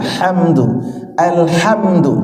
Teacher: ha juga hamdu alhamdu coba alhamdu ya A biasa terus Hnya ada keluar hawanya bersih dari tengah tenggorokan